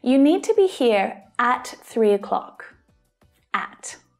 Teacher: by stressing at, I'm adding emphasis. I'm making the meaning stronger. You need to be here exactly at 3 o'clock.